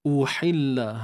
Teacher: hamzah di depan u, pangkal kerongkong, uhi ha pedas, sempit kan tengah kerongkong kita ni.